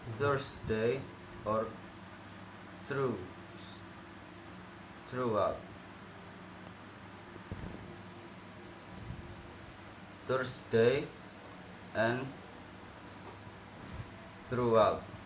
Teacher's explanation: It should use the voiceless dental fricative making it Thursday or through throughout.